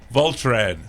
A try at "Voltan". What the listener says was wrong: No R. There's no R. It's Voltan.